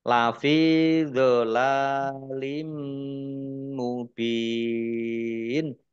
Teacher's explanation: nun sukun bertemu dengan huruf qaf bacaan ikhfa samar-samar bak sukun bacaan kolkolah dibaca memantul ditampakkan pantulannya